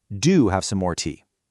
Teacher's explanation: In British English particularly, a positive imperative can be made incredibly insistent or extremely polite by slapping a heavily stressed do right before the verb